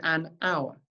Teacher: even though hour starts with an H we don't pronounce the h it's a silent h so actually it's a vow sound at the start still because